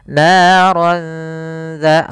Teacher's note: langsung ke huruf dzalnya sambil ditahan dengan gunnah. Kemudian pada lafal dza, hati-hati jangan terbaca dengan zata lahab dengan huruf zai, karena di sini huruf dzal. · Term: ikhfa